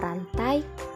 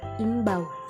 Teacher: adalah bunyi vokal rangkap yang tergolong dalam satu suku kata